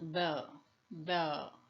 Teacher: we can feel that the vocal folds are closed but that there is a vibration because of this closeness of the folds there's a vibration the